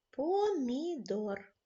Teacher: Так це звук м він м'який в одній схемі є М'який приголосний в другій схемі м'якого приголосного